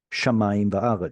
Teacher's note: In this penultimate word, we get to see the original form of the conjunctive vav as va rather than v. Most of the time when we see the conjunctive vav, it has already reduced to a shva under it.